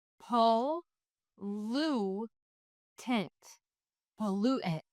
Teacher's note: The O is making the schwa sound, and the U says oo because there is a final E at the end of the word pollute.